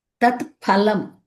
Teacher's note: ఫలం పాకి ఒత్తి పెట్టినట్టు పలక